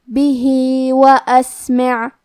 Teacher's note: کلمت اسمع میں سین ساکن ہے، لہذا ہم سین کو ہمس سے پڑھیں گے